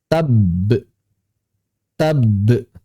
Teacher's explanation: pertama-tama ada sukun ba di sini, kemudian ba tersebut dipantulkan